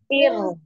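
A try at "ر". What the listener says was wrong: Irnya turun. Turunkan pangkal lidahnya. Ir. Ir. Tetap dialirkan. Ir. Ir juga mengalir. Ir. Cuma dia tipis ya, tidak naik pangkal tenggorokannya.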